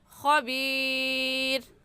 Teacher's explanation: مد وقفی اور مد عارضی ہوگا یہاں پر، اور 3 الف کے برابر کھینچیں گے